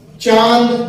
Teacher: इन्हें बोलते समय नाक और मुंह दोनों का बराबर प्रयोग होगा, वही आपके अनुनासिक स्वर होंगे